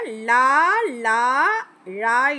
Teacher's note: நா மேல் பற்களின் அடியை தொடுவதால் லகரம் தோன்றும்